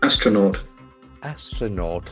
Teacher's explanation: a very interesting word having the accent on the first syllable